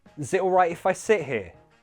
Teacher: No one really hears that first schwa sound. It's so quiet, like it basically doesn't exist.